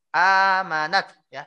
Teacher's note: Qala amantu annahu la ilaha illalladzi amanat. A-nya panjang Pak. A yang seperti ini panjang Pak ya. Ini mad badal namanya Pak. Amanat ya, seperti itu Pak.